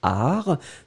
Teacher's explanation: le T final est totalement muet